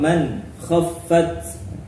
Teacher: bacaan izhar halqi. Nun sukun bertemu kh